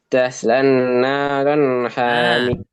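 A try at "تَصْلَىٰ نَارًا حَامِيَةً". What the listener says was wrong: Lamnya jangan ditasydidkan ke nun. Tasla naran hamiyah. Itu lamnya ndak boleh dimasukin ke nun. Jadi bacanya jangan taslan, ndak. Ya, tapi lamnya mat tabi'i, nunnya mat tabi'i. Tasla naron hamiyah.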